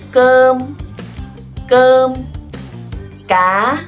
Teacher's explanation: this C and K in Vietnamese are implosive sounds. That means no air explosion coming out of your mouth. So it's just gone, or cơm, cá, it's just g, okay?